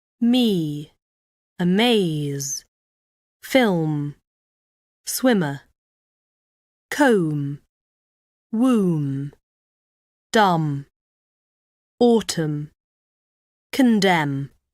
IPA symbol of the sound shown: m